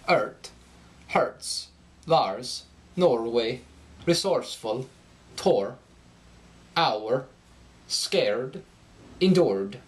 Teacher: the R endings are going to rise in pitch